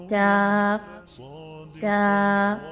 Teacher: تا کو زبان کی جو نوک ہے فرنٹ سے، اس کو آپ نے اندر کے مسوڑوں کے ساتھ ملانا ہے. اوپر والے دانتوں کے مسوڑوں کے ساتھ جب آپ زبان کی نوک کو ملائیں گے تو حرف ادا ہوگا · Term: حروف نطعیہ